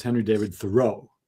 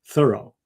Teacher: there's evidence that he pronounced his name with an accent on the first syllable. So it sounds like thorough, like I was very thorough, which he was.